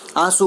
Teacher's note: આંસુમાં સ્વર પોતે જ નાસિક્ય છે અને તેના નાસિક્યપણાને કોઈ વર્ગના વ્યંજન સાથે આપણે જોડી શકતા નથી. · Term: અનુસ્વાર કોમળ